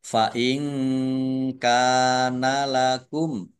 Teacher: nun sukun bertemu dengan huruf kaf, bacaan ikhfa dibaca samar-samar